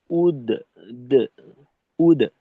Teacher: দালের উচ্চারণের সময় ঠোটটাকে গোল না রেখে ঠোটারে খুলে ফেলব। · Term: জবরমুখী